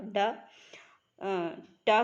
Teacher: टा वर्ड जो टा है वो आता है मूर्धन्य ध्वनियों में